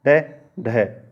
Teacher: उत्क्षिप्त व्यंजन कहलाते हैं क्योंकि इनका उच्चारण एक ही झटके के साथ में किया जाता है